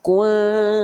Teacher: Dengungannya lemah atau disebutnya ikhfa a'la. Samarnya tinggi, dengungannya lemah. Dengungannya depan mulut, bukan kuat di hidung. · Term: ikhfa akrob